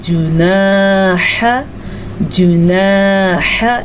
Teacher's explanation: جب الف سے پچھلے حرف پہ زبر ہو تو اسے الف مدہ کہتے ہیں۔ اسے ہم کھینچ کے پڑھیں گے تقریباً ایک کھڑی زبر کے برابر